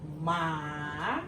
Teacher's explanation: It's fall down, then it goes up. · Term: third tone